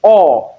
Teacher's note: long mid low back rounded vowel